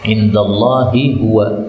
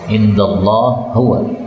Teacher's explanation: Ini ha ketemu ha boleh idgham.